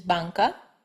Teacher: N as in Spanish is banca. This is an N produced with the back of the tongue instead of with the front